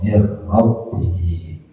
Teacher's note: maka masukkan bunyi n kepada bunyi r ya, bunyi nun mati min kepada bunyi huruf rob, mir rabbihi, namanya idgham dilakukan ya.